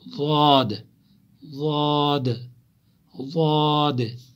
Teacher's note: زواحق، تواحن، نواجز، جو دانت زواحق، تواحن، نواجز، انہیں کو ڈھاڑے کہتے ہیں، یمن زن اس کاشر پٹ اڑمچ ونن، تو یہی اوپر والے ان کے ساتھ ٹچ ہوتا ہے، زبان کی کروٹ ان کے ساتھ ملتی ہیں ڈاڑوں کے ساتھ، تو وہاں سے ضاد نکلتا ہے